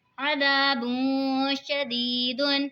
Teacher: یا ساکن سے پہلے زیر ہے تو یا مدہ ہوگا، اسی لیے اس کو کھینچ کے پڑھیں گے